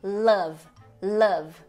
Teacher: a vogal central, que é esse V de cabeça para baixo